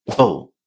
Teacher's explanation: The first thing you need to remember is that when you have an adjective that ends in able, you pronounce this ending as able. A very short vowel sound, and then b and l together without any vowel in between. Bull. The tendency learners have is to say able, because obviously they see A-B-L-E at the end.